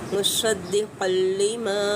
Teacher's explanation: क़ाफ पुर करके अदा करेंगे